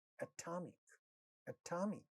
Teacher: Three syllables in this word. Second syllable has ta sound at the initial position of a stressed syllable. Therefore, it is getting aspirated.